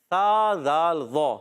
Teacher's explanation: ذال الف زبر ذا، ایک الف کھینچنا ہے. ذال کا مخرج زبان کا سرا اوپر کے دانتوں کے اندرونی کنارے سے